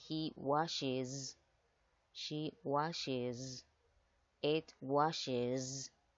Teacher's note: I wash, you wash, he washes, she washes, it washes, we wash, you wash, they wash. Hay que tener en cuenta que esa ES se pronuncia is. Por eso yo digo aquí he washes, she washes, it washes.